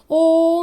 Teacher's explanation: तो इसमें दीर्घ स्वर से अधिक समय लग रहा है, इसलिए इसे प्लुत स्वर कहते हैं